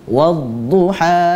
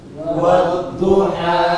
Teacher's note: Nah, jangan dipanjangkan lagi menjadi 3 atau 4 harokat. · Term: 2 harokat